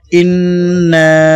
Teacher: আলিফ নুন জের ইন, নুনে তাশদীদ, নুনে ওয়াজিব গুন্না করতে হবে। নুন আলিফ জবর না, এখানে 3 আলিফ লম্বা করে পড়তে হবে।